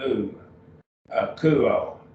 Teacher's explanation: That emphasis on the diphthong. The Omicron upsilon is a diphthong, so it's treated like one syllable. It just gets one syllable. It's got a single vowel sound, oo, akuo. We drop the omega ending, that's first person singular.